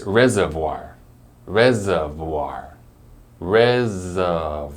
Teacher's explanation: even though there's that second r in the middle we don't really say it we just say uh instead